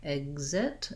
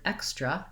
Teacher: The letter X in this word says the K sounds, K and S sounds. In some other words, it would say a G and Z, like exit is voiced. In this word extra, it's voiceless